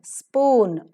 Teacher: S-P-O-O-N, spoon, not to be aspirated because the word begins with s sound